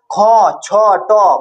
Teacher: মানে ক এর তুলনায় খ এর সময়টা বেশি লাগছে।